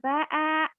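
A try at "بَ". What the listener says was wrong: aja mana ada a di situ Bu kenapa jadi a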